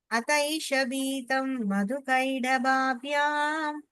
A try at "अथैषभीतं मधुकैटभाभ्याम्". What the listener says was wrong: கைட கிடையாது கைட்ட ஓகேவா विरिञ्चमालोक्य हरिर्जगाद